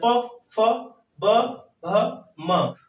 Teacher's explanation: इनको बोलने के लिए हमें ओठों को मिलाना पड़ता है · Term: ओठस्य